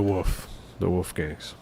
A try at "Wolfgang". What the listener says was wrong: States you don't pronounce the L, do you? It's not a wolf. It's a woof. WOOF. Woof.